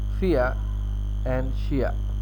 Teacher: In Western Australian English, there is a tendency for centering diphthongs to be pronounced as full diphthongs.